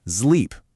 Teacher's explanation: before an L, you have to add a little buzz to it, making it a Z sound